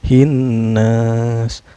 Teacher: Cara bacanya nunnya ini didengungkan ya, hin gitu. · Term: gunah